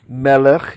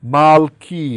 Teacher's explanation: they switch to the ah sound when you put a suffix on the end